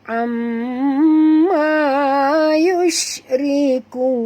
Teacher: Ta'a di sini 2 harakat, la juga 2 harakat. Amma mim bersabdu wajib dengung 2 harakat.